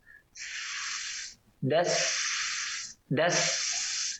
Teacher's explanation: Ya, masih belum ya, belum kedengaran tajamnya suara sin, ya, gigi seri atas dan bawah rapat dan ujung lidah ke pangkal gigi seri bawah ditempelkan dengan lembut dan suara mengalir gigi seri atas dan bawah. Das, itulah sifat shafir.